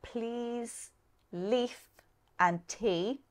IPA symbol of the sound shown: iː